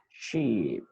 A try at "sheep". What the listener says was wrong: Harus panjang. Ini bacanya adalah sheep.